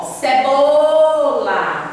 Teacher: Você demora mais no bo. Então, o bo aqui é a sílaba tônica.